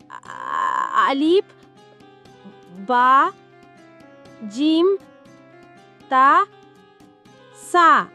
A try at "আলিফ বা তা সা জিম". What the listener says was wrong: আলিফ বায়ের পর তা হবে, আবার বলো। তোমাকে আগেই বলেছিলাম আলিফ বা তা সা জিম এইভাবে বলো।